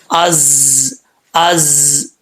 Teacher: زا کو جب بھی پڑھیں گے اس میں سیٹی آئے گی, بغیر سیٹی کے یہ نہیں پڑھا جائے گا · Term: سیٹی والا